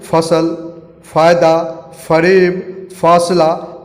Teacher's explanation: हिंदी वर्णमाला के इस अक्षर के नीचे बिंदु लगने से इसका उच्चारण अलग होता है उर्दू में। इसका उच्चारण दोनों होठों के खुलते ही मुख से बाहर हवा निकलने पर होता है। इसे इंग्लिश में F लिखते हैं।